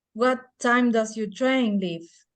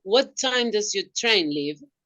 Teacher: It will be fall and then rise. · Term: fall rise